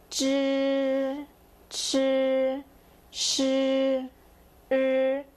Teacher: These are grouped together because they all have the kind of R sound tagging along